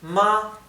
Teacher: es ma es un tono más alto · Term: tono alto